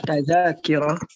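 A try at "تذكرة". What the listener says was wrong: La. Harful dal sakin. Huruf dalnya sukun.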